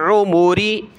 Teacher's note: आइन को गले से निकालें